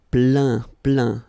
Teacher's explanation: Remember this E-I-N nasal. So it goes in your nose